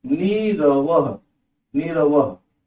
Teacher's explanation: जैसे स्ट्रक्चर के रूप में आपको बता रहे हैं, ये देखिए स्ट्रक्चर हुआ पूरा कंप्लीट, ये है मानी कंडीशन है, और उसका विकार ये उत्पन्न होगा, ये विकार उत्पन्न होगा कि विसर्ग का लोप करा देगा, विसर्ग लोप हो जाएगा, गायब, और ह्रस्व स्वर दीर्घ हो जाएगा, बड़ा बन जाएगा, छोटी छोटी ई है तो बड़ी ई।